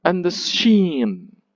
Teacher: you don't give the stress to all the words but just sheen because that's the focus of it · The anapest is the unstressed, unstressed, and then stressed. 2 unstressed syllables followed by 1 stressed syllable.